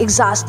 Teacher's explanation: Wala ring saysay yung X nito. Pinalitan siya ng G sound.